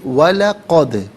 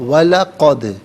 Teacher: دال ساکن ہے، حرف قلقلہ ہے، تو آواز لوٹتی ہوئی محسوس ہونی چاہیے، وَلَقَدْ نہیں، وَلَقَدْ۔